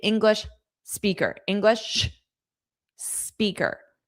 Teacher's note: I took that pause there so I could fully pronounce the sh and the s clearly without blending the sounds in a way we don't want to blend a sound. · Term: strategic pause